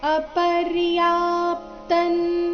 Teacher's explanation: ಇಲ್ಲಿ ಅಪರ್ಯಾ ಆದ ನಂತರ ಅರ್ಧ ಪಕಾರ ಮತ್ತೆ ಪೂರ್ತಿ ತ ಇದೆ